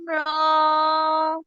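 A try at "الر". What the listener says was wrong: র মাত্র এক আলিফ টান, টানটা বেশি হয়ে যাচ্ছে। লাম আর মিমে টান, টান বেশি, মাঝখানে গুন্না আছে। আলিফ লাম মিম র। টান হবে, তারপরে গুণনা হবে।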